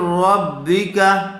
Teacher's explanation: کاف کو جلدی پڑھیں گے کھینچیں گے نہیں اس لیے کہ کاف کے اوپر زبر ہے را زبر را حمزہ واو پیش او رؤ فا را دو